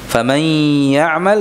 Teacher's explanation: ya di sini disertai dengan dengung yang memanjang durasinya, mutaghunnah mutawwalah